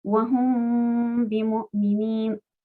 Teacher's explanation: cuando leamos hum, esa mim que salga por la nariz, con la boca no hacemos nada. Wahum, un sonido extraño que sale solo por la nariz. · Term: ikhfa con la mim